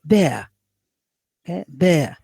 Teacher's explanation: here we have a diphthong a central diphthong ending with the central vowel